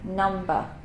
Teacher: in British English pronunciation, we do not make the R sound at the end of words